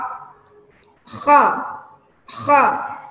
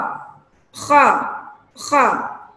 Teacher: Suaranya, tempat keluarnya suara ada di pangkal tenggorokan. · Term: huruf kha